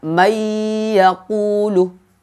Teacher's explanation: Jadi pengucapannya dengan dengung. Nun mati bertemu dengan iya, seakan-akan iyanya itu terdapat tasydid, padahal di sana tidak ada tasydid. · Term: idgham bi gunnah